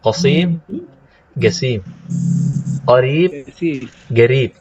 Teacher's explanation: ada juga qof diganti dengan ga dengan g seperti bahasa kita